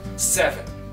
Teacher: on va insister sur la première syllabe